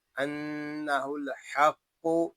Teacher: قاف حروف مستعلیہ میں سے ہے اس کو پوری نہیں موٹا پڑھیں گے، اور قاف مشدد ہے اس کو جماعوں کے ساتھ ادا کریں · انہ الحق، نون میں شدد میں غنہ ہوگا،